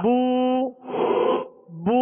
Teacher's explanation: ہونٹوں کو گول کریں گے. پیش کی ادائیگی میں ہونٹوں کو گول کریں گے تو معروف پڑھا جائے گا، ورنہ اگر ہونٹوں کو گول نہیں کیا تو یہ مجہول پڑھا جائے گا.